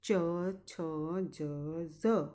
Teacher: તો એને આપણે તાલવ્ય કહીએ છીએ. જ્યારે તમે ઉચ્ચાર કરશો ત્યારે તમારી જીભ તાળવા તરફ જશે.